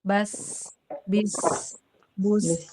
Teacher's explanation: Di makhrajnya karena dia bisa ngalir karena lemah tekanannya tapi dia kuat di desis-nya